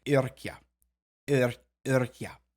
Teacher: It was previously a U that got changed to a Y because of rounding and fronting.